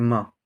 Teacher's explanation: इसको ओष्ठ से भी बोल सकते हैं, ओष्ठ और नाक दोनों से बोलते हैं